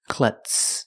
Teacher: The Z is not pronounced with the voiced Z sound. It's pronounced with the S sound with no voice.